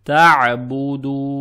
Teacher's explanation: В данном случае мы имеем право увеличить длину буквы дал (дамма) на четыре единицы. Это будет мадд арид, получается "табудун", но лучше и точнее, если вы решите не останавливаться, то удлините дамму над буквой дал всего на два счета, это будет мадд таби'и.